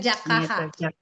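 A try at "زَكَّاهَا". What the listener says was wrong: Zai Bu, bukan Jim. Zak Kaha.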